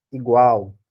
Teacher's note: O L tem som de U, né? Igual.